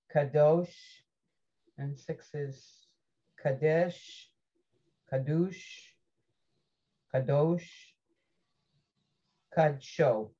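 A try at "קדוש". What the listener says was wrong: Try the first two again. The vowels were a little mixed.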